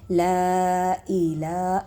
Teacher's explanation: لا کے اوپر دیکھیں مد ہے، اس کو کھینچیں گے